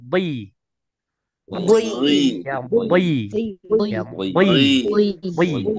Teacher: Huruf bod ketika dia kasroh maka tetap tebal. Ya, ya bo menjadi boi, boi.